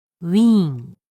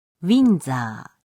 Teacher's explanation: You can tell that “ウィーン” is pronounced much longer.